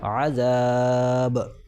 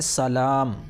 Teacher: حرف مدہ کے بعد سکون وقف کی وجہ سے آ رہا ہے، لہٰذا یہاں پر مد ہوگا اور 3 الف کے برابر کھینچ کر پڑھا جائے گا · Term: مد سکون عارضی وقفی